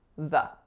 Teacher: That's a fricative, meaning continuous airflow. And then I'm following that word up with a tiny little schwa